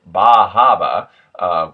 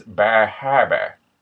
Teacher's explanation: with a native Maine accent, the tongue is actually going to slip past the back teeth and towards the soft palate, making an R sound. So it's not dropped like in industry standards.